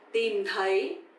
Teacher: The is not like a T in English, of course, but the second one, TH, sounds like the, a bit softer, right? So tìm is dấu huyền, you have to go down, and thấy, dấu sắc, you have to go up. So tìm thấy, to find, okay?